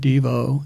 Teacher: it ended up accenting the second syllable